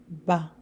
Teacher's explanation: We close the two lips together and then we release. And we have to put more pressure for this one.